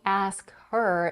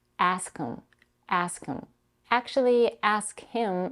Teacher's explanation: ask him and ask them sound the same way if you connect them and drop the first sound